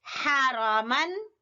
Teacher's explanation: ہا کی آواز وسط حلق سے، مخارج کا دھیان رکھتے ہوئے ہم پڑھیں گے